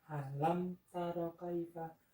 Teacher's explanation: merapatkan kedua bibir kemudian segera membukanya untuk membaca huruf berikutnya